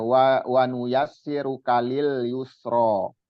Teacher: Nah, jadi di ro-nya itu 2 harokat, yang lain biasa.